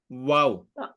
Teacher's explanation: দুই ঠোঁট গোল করে মাঝখানে খালি জায়গা থেকে ওয়াও উচ্চারিত হয়